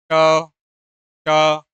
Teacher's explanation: मुर्धन्य व्यंजन वह व्यंजन होता है जिसका उच्चारण मुंह से अथवा मुंह के भीतर की छत का अगला भाग होता है।